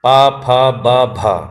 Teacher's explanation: जिनके उच्चारण में दोनों होंठ आपस में मिलते हों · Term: ओष्ठीय व्यंजन